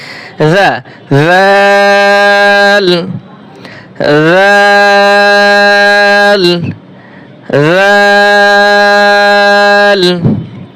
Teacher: হরফটা নরম হবে এবং জিহ্বা উপরে 2 দাঁতের আগার সাথে লাগবে